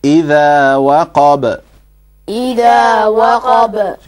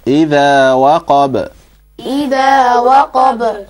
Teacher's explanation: there's a sukoon on the ba, you bounce it slightly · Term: qalqala